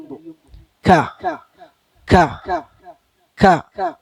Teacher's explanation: കാഫ് ഉച്ചരിക്കുമ്പോ ഒരു ചെറിയ കാറ്റ് പോണം ഉച്ചരിച്ച് കഴിയുമ്പോ. ക ക ക ഉച്ചാരണവും കാറ്റും കൂടി ഒപ്പാകരുത്, അങ്ങനെ ആകരുത്.